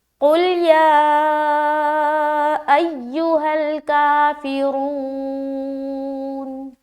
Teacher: یا کو لمبا کرنا ہے، یعنی کہ ایک الف سے زائد لمبا کرنا ہے کیونکہ مد ہے اس کے اوپر، اور اس یا میں سختی لازمی کرنی ہے، پھر کاف کو بھی کھینچنا ہے اور رو کو بھی کھینچنا ہے اور نون کے اوپر وقف کرنا ہے، را کو موٹا ادا کریں گے کیونکہ پیش ہے اس کے اوپر۔